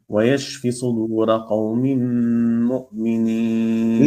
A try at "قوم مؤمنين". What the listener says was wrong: لا من ليش ما في أبدا قوم مم كلها التقام اثنين من ميم إلى ميم قوم مم مم